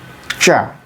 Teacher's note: So ta plus sha equals cha.